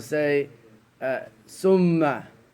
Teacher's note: some people will say summa, because the dialect is that the tha sounds sa